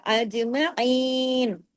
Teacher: अज जीम पे कलकला